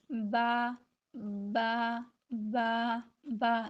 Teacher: دونوں ہونٹوں کے ملنے سے ادا ہو رہا ہے